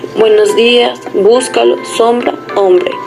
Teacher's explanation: La articulación de esta consonante bilabial oclusiva sonora se produce con la glotis sonora y los demás órganos que presentan una tensión muscular algo menor que en la P.